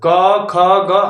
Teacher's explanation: जो भी क वर्ग के वर्ण को बोलेंगे उन वर्णों को बोलने में हम कंठ का इस्तेमाल करते हैं